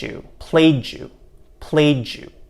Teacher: What often happens is that we change the d and y to a j sound instead.